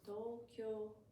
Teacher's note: It's like starting higher and then goes down. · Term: accent